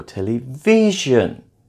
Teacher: Television is stressed on the third syllable.